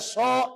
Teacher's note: so itu tulisannya panjang, so dibacanya pendek, tulisannya panjang, cara bacanya pendek, aksol.